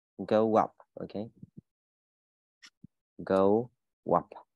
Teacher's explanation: Nó kết thúc bằng một âm u nhá. Mà bắt đầu từ tiếp theo bắt đầu bằng một nguyên âm nhá. Thì mình cho dấu w vào nhá. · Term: nối âm